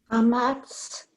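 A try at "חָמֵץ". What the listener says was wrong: Vowel under the mem. Look again. Chametz.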